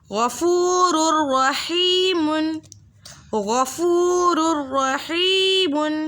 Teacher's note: دو پیش کی تنوین کے بعد را متحرک آ رہا ہے تو ہم نے بغیر غنّے کے پڑھنا ہے، قاعدے کا نام ہوگا ادغام بلا غنّہ۔